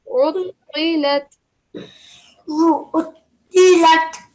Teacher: Remember with the ayn, as I said, yeah, remember the sound in the middle. And the ta has a thick, heavy sound